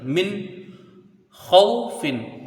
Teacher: میم کو نون سے ملائیں گے، نون ساکن کے بعد حروف حلقی کا خا ہے تو یہاں پر اظہار حلقی ہوگا، یعنی نون کو ظاہر کر کے بغیر غنہ کے جلدی پڑھا جائے گا. ایک الف کی مقدار کا غنہ یہاں پر نہیں ہوگا بلکہ جلدی پڑھیں گے